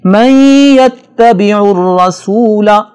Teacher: را پر زبر ہے، لہٰذا اس را کو موٹا پڑھا جائے گا